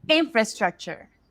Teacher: the most of the energy goes for the in and everything else is like it's just there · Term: primary stress